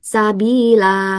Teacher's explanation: tetap dibaca panjang karena sifarnya diabaikan